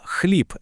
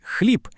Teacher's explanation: в українській мові дзвінки приголосні в кінці слова ніколи не оглушуються. Вони завжди зберігають свою дзвінкість.